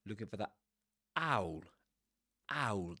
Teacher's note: It's called um a glottal reinforcement, right? Because there's a glottal stop at the beginning of the word.